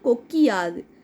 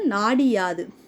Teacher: தன்னோட ஒரு மாத்திரை அளவுல இருந்து குறுகி ஒலிக்கிற இகரம் வந்து குற்றியல் இகரம்னு சொல்றோம்